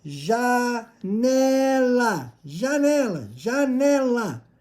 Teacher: Última é o lá. Mas o lá não é a sílaba tônica. É o né de janela. Então ela é a penúltima sílaba tônica.